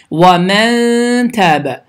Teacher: Sükunlunundan sonra t hərfi gəlir. Deməli, N səsi burunda gizlənərək iki saniyə uzadılaraq ixə qaydası kimi bu formada oxunmalıdır.